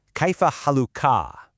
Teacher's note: For a guy, the sound opens up at the end. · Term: small vowel shift